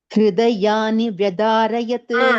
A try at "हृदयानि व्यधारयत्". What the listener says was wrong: There is one Ditvam, Baini. Hridayani Vyadharayat. Vyadharayat. There is one Ditvam there.